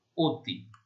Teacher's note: একটি হচ্ছে ও এর মতো বা সংবৃত উচ্চারণ